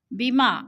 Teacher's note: الف خالی سے پہلے میم کے اوپر زبر ہے تو الف مدہ کو ہم نے ایک الف دو حرکات کے برابر لمبا کر کے پڑھنا ہے